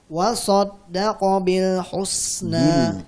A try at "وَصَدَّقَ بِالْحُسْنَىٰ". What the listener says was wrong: Kasrahnya jelaskan.